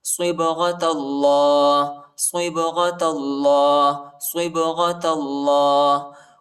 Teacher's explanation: صبغة اللہ، صاد کو با کے ساتھ ملائیں گے، با کو جھٹکے کے ساتھ پڑھیں گے، قلقلہ کریں گے، ٹھیک ہے، حروف قلقلہ کا حرف ہے۔